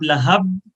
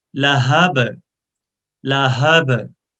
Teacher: और हा को सीने से अदा करना है. और ये बा में कलकला है, इको साउंड है.